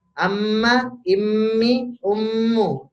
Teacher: bibirnya jalur angin dari mulutnya kita blok dengan kita mingkem ya kita tutup mulutnya jadi anginnya itu keluar lewat hidung · Nah, inilah yang disebut gunnah, angin mencari keluar lewat hidung.